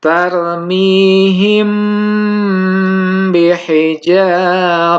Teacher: ada mim mati atau mim sukun bertemu dengan huruf ba maka cara membacanya dengan menyamarkan bacaan mim mati di bibir sambil didengungkan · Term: Ikhfa Syafawi, ikhfa syafawi